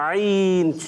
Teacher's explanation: اسی طرح ہم ادائیگی کرتے ہیں عین، حلق کے درمیان والے سے